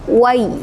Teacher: Jadi bacanya itu ringan ya, langsung ke ya matinya tanpa dipanjangkan, tanpa didengungkan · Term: mad lain